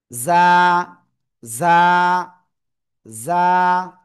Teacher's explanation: জিব্বার আগা, সামনে নিচে দুই দাঁত, দুই দাঁতের পেট ও আগার সাথে লাগাবো, লাগিয়ে এক আলিফ টেনে পড়বো। ঝিঝি পোকার ন্যায় একটু আওয়াজ হবে, জ্জ, এরকম একটুখানি আওয়াজ হবে, হয়ে এক আলিফটা নিয়ে উচ্চারণ করতে হবে।